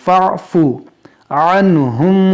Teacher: اس فا کو عین سے ملا دیں گے